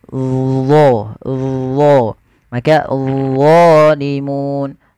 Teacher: dia mirip dengan zal, tapi pangkal lidahnya terangkat, dan dia punya sifat namanya idbaq, melekat ke langit-langit lidah kita